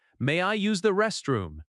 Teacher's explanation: May I use often links and sounds like my-eye-use. Restroom has stress on rest.